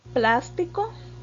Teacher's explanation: Plástico tiene el acento en plas, ¿verdad? Esa sílaba está en la posición antepenúltima o en la tercera de derecha a izquierda.